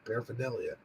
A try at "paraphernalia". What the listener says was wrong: I still hear you saying the A, whether you think you are or not. Paraphernalia, you said. Paraphernalia.